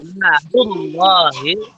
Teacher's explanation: Namanya lam jalalah itu tebal ya.